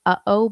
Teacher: Can you feel that your throat has kind of closed up? You're not letting air in or out. That's because the the glauus the space between the vocal folds has stopped up. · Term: glottle stop